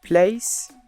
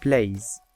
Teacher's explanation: /s/ is voiceless alveolar fricative /z/ is voiced alveolar fricative